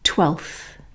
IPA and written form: twelθ (twelfth)